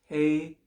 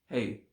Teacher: the a-i is a diphthong so a combined sound that is hey with a bit of e at the end but almost nothing hey right for the fanatics of pronunciation thank